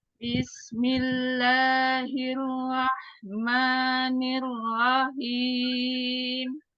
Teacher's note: Roknya tebal, pangkal lidahnya dinaikkan karena berharokat fathah.